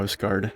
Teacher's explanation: Like there's short and long vowel sounds. If it's a short a sound, it's pronounced more like ow, like au almost.